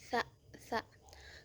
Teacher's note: Cara keluarnya itu ihtikaki, adanya gesekan gitu. Adanya gesekan antara lidah dengan gigi. Sa. Kemudian posisi pita suaranya itu mahmus, tidak bersuara.